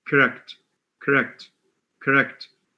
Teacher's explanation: the second sound the vowel is a schwa it's not an o it's a schwa